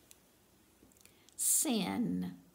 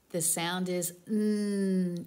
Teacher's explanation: Your tongue is at the top of the mouth behind your front teeth.